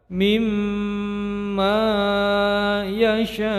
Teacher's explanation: mad wajib muttasil panjangnya 5 harokat